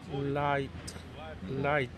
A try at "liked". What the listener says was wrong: So there's a k sound here, so it's liked. No, that's light. That's more like a light shining.